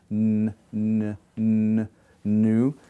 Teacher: So it's a liquid because of the smoothness of your breath, but it's also a nasal because when you say it, n, n, n, nu, I put my tongue in the alveolar ridge, n, n, and break away from the ridge, but also my breath goes up into my nasal passage, and therefore it's referred to as a nasal. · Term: alveolar nasal